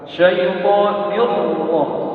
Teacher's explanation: Tetapi lidahnya kalau terhampar, kemudian yang mengangkat itu samping kiri kanan lidah naik mengarah ke halaqil a'la, ke langit-langit atas. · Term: isti'la